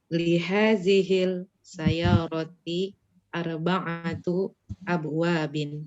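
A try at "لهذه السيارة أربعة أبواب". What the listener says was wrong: Tadi bacanya lihadhil sayyarati atau Ini syamsiyah. Ahsanti, li hadhihi as-sayyarati arba'atu abwabin.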